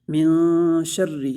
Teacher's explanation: من شر، اس لیے کہ را کے اوپر تشدید ہے، اور را کو باریک پڑھیں گے اس لیے کہ را کے نیچے زیر ہے